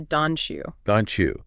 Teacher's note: When a word ends with a hard T sound and the very next word starts with a Y sound, the collision actually creates a CH sound. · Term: palatalization